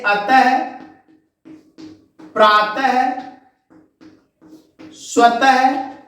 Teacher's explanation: विसर्ग ये हिंदी वर्णमाला में आधे ह की तरह उच्चारित होते हैं। यानी ह के नीचे हलंत लगाकर हल्के ह से इसको पढ़ते हैं।